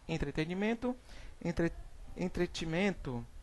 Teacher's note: suprime a primeira de duas sílabas sucessivas no meio da palavra, por ter semelhança sonora com a seguinte